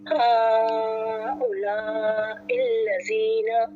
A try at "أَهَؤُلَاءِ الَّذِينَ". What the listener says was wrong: آ کی بھی آواز آئے گی، یہ جو الف ڈلا ہوا ہے نا اس کی بھی آواز حمزہ کی۔